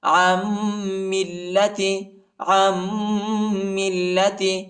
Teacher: عین کو میم کے ساتھ ملائیں گے اور غنہ کریں گے · نون ساکنہ ہے، ٹھیک ہے، نون نہیں پڑھا جاتا، اور میم کو لام کے ساتھ ملائیں گے